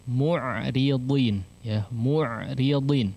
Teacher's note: Ra-nya di sini ditipiskan, ya. Dodnya di sini tetap ditebalkan